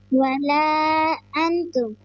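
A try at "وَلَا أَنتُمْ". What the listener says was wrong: کیوں لمبا کیوں کیا؟ کیوں لمبا کیا اس کو؟ ولا انتم ہے ولا انتم ہے؟ مد ہے. مد کا میننگ ہوتا ہے لمبا کرنا، کھینچنا.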